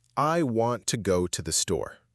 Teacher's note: The stressed words are want, go, and store. Those are the important ones, the words you really need to catch. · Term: stress-timed rhythm